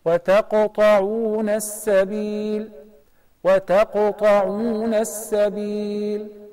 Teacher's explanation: This is the least qalqala because the qalqala letter is sakin and is in the middle of the word.